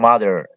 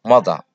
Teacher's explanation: Mareykanka wuxuu leeyahay mother R-ta ayuu muujinayaa. Britishka waxay leeyihiin mother R-ta way qarinayaan.